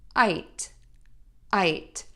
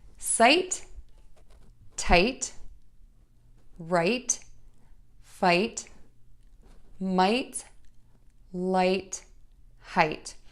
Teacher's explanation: you're gonna end that with the sound by touching the tip of your tongue to the back of your top front teeth